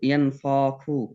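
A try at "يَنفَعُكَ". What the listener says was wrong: হাতে টান দিলেন কেন? হা বলে তো টান হয়ে যাইতেছে। ইয়াং ফাখু,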